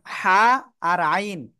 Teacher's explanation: হা আর আইন এই দুইটা অক্ষর একই জায়গা থেকে উচ্চারণ হবে হলকের মধ্যখান থেকে বা গলার মধ্যখান থেকে উচ্চারণ হবে হা গলা থেকে হালকা একটু বাতাস বের করতে হবে আইন অক্ষরটা